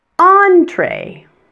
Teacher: notice that en in this word is also pronounced on and it also has a TR sound after it